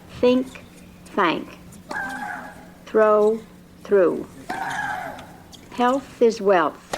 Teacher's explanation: The unvoiced th sound as in thin, nothing, bath is produced by placing the tip of the tongue lightly against the lower edge of the upper front teeth and blowing out an unvoiced breath.